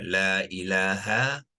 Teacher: La dibacakan 2 harakat sebab dia sudah menjadi mad asli ya. Mad asli dibaca sepanjang 2 harakat.